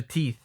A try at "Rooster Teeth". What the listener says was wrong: Why do you keep calling it Rooster Teeth? There's no teen. There's teeth.